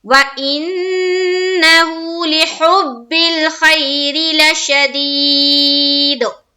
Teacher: ہا حلق سے نکالیں گے